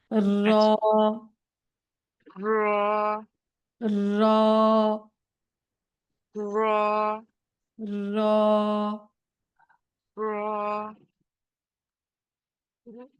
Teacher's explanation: জিহ্বাটা উল্টো করে তারপরে উপরে তালুর সাথে লাগাবেন